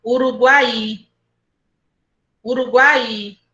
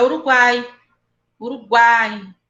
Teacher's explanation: na palavra Uruguai, o I não é forte para eu separar. Eu não posso dizer assim, Uruguai.